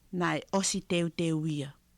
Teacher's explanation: she says osi clearly, but a lot of the time it is os